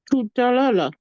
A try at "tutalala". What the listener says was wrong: Yes, perfect. That is it.